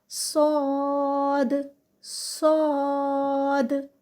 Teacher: اس کو آپ موٹا کر لیں، سین کو یعنی زبان کی جڑ اٹھا لیں سین کہتے وقت، اور ساتھ میں منہ کو ہوا سے بھر لیں تو کیا ہوگا، صاد بن جائے گا، اور پھر وہاں سے ہم اس کو ادا کریں گے صاد صاد، اس طرح سے۔